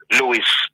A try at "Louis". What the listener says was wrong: Louis, I think the S is silent.